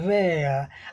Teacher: British अंग्रेजी में वहां आर का उच्चारण तभी होता है जब उसके ठीक बाद कोई स्वर आता है अन्यथा यह शांत रहता है।